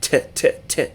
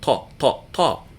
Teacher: the to sound the unaspirated T not t but to and it's an emphatic T it lowers the pitch of the vowels around it · The next letter that we're going to learn is Ta, a connecting letter that makes the ta sound, the unaspirated T, not t, but ta, ta, ta. And it's an emphatic T. It lowers the pitch of the vowels around it. So it is the counterpart to ta, just like sald is the counterpart to seen, and dald is the counterpart to dal.